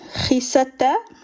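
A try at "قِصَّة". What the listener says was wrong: C'est pas khisa. Ouais, faut mettre la shidda.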